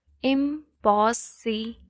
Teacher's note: So im, which is prefix, will never be stressed. Only the syllable in the root word will be stressed.